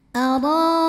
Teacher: karena ada baris fathah tegak di atas huruf ra, maka cara bacanya dipanjangkan 2 harokat. Arakallah. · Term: mad tabi'i muqaddar